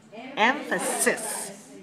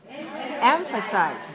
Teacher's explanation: We place our emphasis on the first syllable of both of these words.